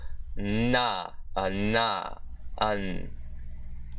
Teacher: creating the voiced dentialveolar nasal consonant